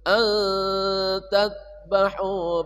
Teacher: nun mati bertemu tak, namanya ikhfa haqiqi, samar dan dengung